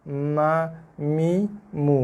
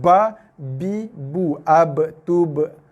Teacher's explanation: Mim, huruf keluar daripada dua bibir yang bersentuhan. Tapi sekadar bersentuhan tanpa perlu, bukan tanpa, tidak boleh ditekan. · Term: huruf mim